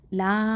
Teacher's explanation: ஹம்சா இருக்குது. அப்போது இங்கே லா அப்படின்னு சொல்லி 4 இல்லைனா 5 அலிஃப் நீட்டணும் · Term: மத்தல் ஜாயிஸ் அல் முன்ஃபசில்